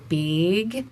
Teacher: we change it to like a tight monophthongal A. So it's like big.